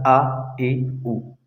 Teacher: الف یہ منہ کے خالی حصے سے ادا ہوتا ہے